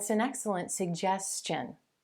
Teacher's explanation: Do you hear how that tone of voice or that intonation, that pitch is falling on that final sound?